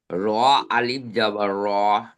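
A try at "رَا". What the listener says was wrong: একটু টান দেন, র।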